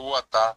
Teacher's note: Cuando yo digo el verbo guatá, tiene la G, pero es oral.